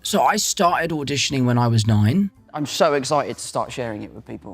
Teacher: So he quite often uses glottal Ts.